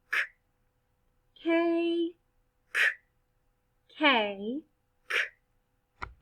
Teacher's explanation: the back of your tongue touches the roof of your mouth